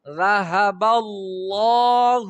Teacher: الله لام ډک شو د زبر د وجنه